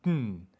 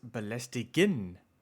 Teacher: words ending in gen in German sound more like a nasally hummed n, like ng